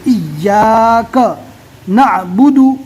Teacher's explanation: یہاں پر تشدید ہے، تشدید والے حرف کو پہلے والے حرف سے ملا کر پڑھیں گے، ای، اور سختی اور طاقت کے ساتھ پڑھیں گے. ڈبل پڑھیں گے.